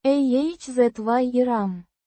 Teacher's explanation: Means lake, instrumental case. Pronounced ah-zye-rahm. with the stress on the second syllable.